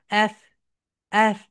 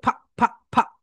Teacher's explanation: দিয়ে দিয়েছি এফ মনে আছে তো যখন তোমরা এফ উচ্চারণ করবে তোমাদের উপরের দাঁত নিচের ঠোঁটের সঙ্গে হালকা টাচ করবে